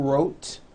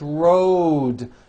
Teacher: It's not wrote, unvoiced, it's road. The whole word is voiced.